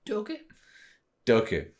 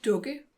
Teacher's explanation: Dukke, but it's not. It's like it does a thing where it steps up the vowel stairs and becomes an O sound, so Dukke. So, yeah.